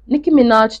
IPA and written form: ˈnɪki mɪˈnɑːʒ (Nicki Minaj)